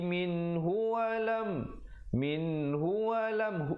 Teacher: min ke hu jangan lambat, di situ izhar halqi